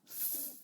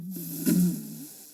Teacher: F is unvoiced or voiceless, and V is voiced.